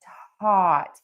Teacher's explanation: for taught, we start by touching the back of the top front teeth